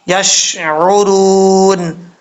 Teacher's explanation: آگے واو مدہ ہے، 1 الف کی مقدار اس کو لمبا کریں گے۔ وقف کریں گے تو وقف کی صورت میں مد عارض وقفی بھی آپ کر سکتے ہیں، 2 سے 2.5 الف کے برابر اس کو لمبا کیا جا سکتا ہے، اور جب نون کو عارضی طور پر ساکن کریں گے اس وقت مد عارض وقفی ہوگی۔ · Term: مد اصلی